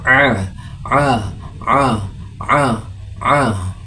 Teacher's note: makharijul huruf ain berada pada bagian tengah tenggorokan. Katuk pangkal tenggorokan seperti mengucapkan huruf a yang disertai tekanan.